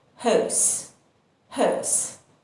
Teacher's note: And in British English, we don't pronounce the r sound